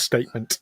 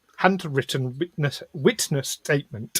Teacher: You want to hit those T's on the glottal.